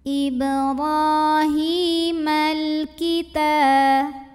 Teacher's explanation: Ala Ibrahimal, lalu alif lamnya dinamakan dengan alif lam qamariyah karena alif lam menghadapi huruf qamariyah yaitu kaf, maka lam sukun dibaca dengan idhar, jelas. Ibrahimal kita, ta mad tabi'i muqaddar karena ada baris fathah tegak di atas huruf ta, cara bacanya panjang 2 harokat.